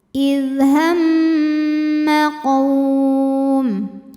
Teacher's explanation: Kemudian ada hukum namanya ghunah musyadah atau mim musyaddadah atau wajibul ghunah. Karena mim bertasydid. Cara bacanya didengungkan.